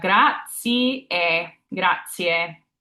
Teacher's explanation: And keeping that A tall, whether that's an AW or AH for you for your phonetic spelling. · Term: tall A's